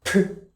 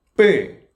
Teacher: Aspirated air comes out. P. And the next one double consonant stronger higher pitch but not aspirated.